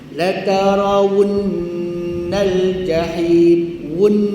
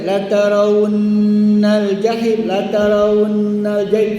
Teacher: Masukkan pada nun serta-merta dan ditahankan. Beratkan serta dengung nun dua ha harakat. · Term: menjaga sabdu, sabdu